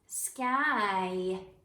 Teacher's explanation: We don't hear any y. We hear the long I sound because sometimes our words have the spelling with Y in it, but it makes the long I sound.